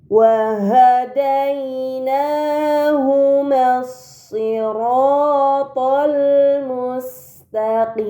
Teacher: terdapat huruf dal yang berharokat fathah bertemu dengan ya sukun. Ini dinamakan lin. Maka dibaca dai.